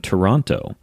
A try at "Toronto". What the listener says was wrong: If you don't want to sound like you're not like in the know, it's Toronto. Don't pronounce the second T.